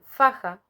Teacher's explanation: el fonema inicial se realiza mediante la fricción del aire entre el labio Superior y Los incisivos Superiores por lo tanto es una consonante fricativa el obstáculo puede estar